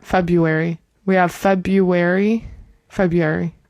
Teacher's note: some people say February and don't pronounce the first R.